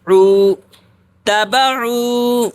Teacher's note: واو مدہ کو ایک الف کے برابر کھینچ کر پڑھتے ہیں